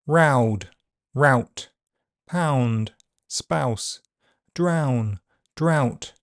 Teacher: Ow is a long vowel sound so it will be shortened before voiceless consonants. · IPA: /aʊ/, [ɐːʊ]